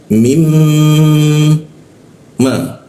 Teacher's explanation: setiap huruf mim ya bertasdid itu kita tahan 2 ketukan.